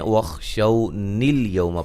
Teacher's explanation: حمزہ حذف ہو جائے گا وصل کی صورت میں